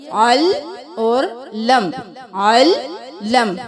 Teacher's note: کو لام کے ساتھ ملائیں گے، لام کو میم کے ساتھ، لام کی 2 بار آواز آنی چاہیے